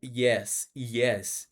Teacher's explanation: É um som único onde você usa sua língua para chegar numa parte da boca única, que é o meio da boca.